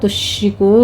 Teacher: تشرکو میں شین پر تفشی ہوگی، را باریک پڑی جائے گی.